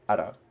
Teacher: qaf is pronounced in different ways in different dialects, or like accents. In urban Arabic, it's pronounced as a hamza